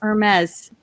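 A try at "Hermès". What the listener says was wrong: The H is silent. It's Hermes.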